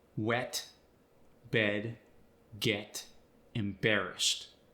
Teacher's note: Words with an E in them get a slight extension, as if you're adding an ah just after the E, very subtly.